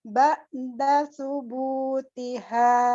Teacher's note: Yang panjang bukan su-nya tapi bu-nya.